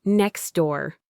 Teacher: If you say it very carefully and slowly, you can pronounce the T sound in next door. But in a fast, natural conversation, that T sound almost always vanishes. · The T is just too much work to pronounce when it's squeezed between the X sound and the D sound.